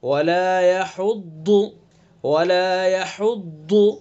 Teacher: زبان کی کروٹ اور اوپر کی ڈاڑوں کی جڑ، اور پر کر کے پڑھیں گے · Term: ضاد